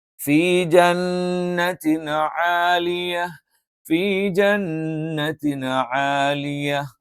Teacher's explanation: മേലെ മുൻപല്ലിന്റെ താഴ്ഭാഗം താഴെ ചുണ്ടിന്റെ പള്ളയിൽ വെച്ചുകൊണ്ടാണ് നമ്മൾ ഉച്ചരിക്കുന്നത്